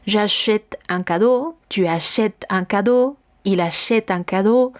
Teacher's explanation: el acento grave el que yo voy a utilizar, el que permite alargar el sonido de la E